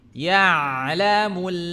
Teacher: Huruf ain ada di tengah tenggorokan.